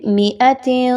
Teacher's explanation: تا کے نیچے 2 زیر کی تنوین ہے اور اس کے بعد سین کا حرف آ رہا ہے، اخفا کرتے ہوئے پڑھیں گے